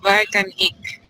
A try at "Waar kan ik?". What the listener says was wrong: Make the A a little bit longer. Waar?